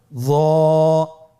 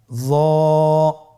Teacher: জিহ্বার আগা, সামনের উপরের 2 দাঁতের আগার সঙ্গে লাগিয়ে উচ্চারিত